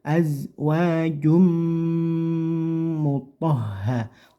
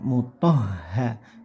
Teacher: pangkal lidahnya terangkat ke atas gitu ya, biar terdengar tebal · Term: huruf to